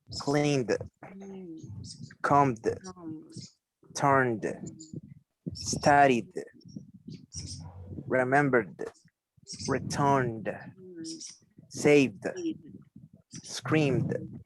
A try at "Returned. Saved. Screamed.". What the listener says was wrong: Excellent. Very good. Nice. I like the way you pronounce the verbs in past. You pronounce them well.